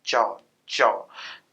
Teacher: च का उच्चारण करते हुए हम तालु को स्पर्श करते हैं, हवा को तालु से बाधित करने की कोशिश करते हैं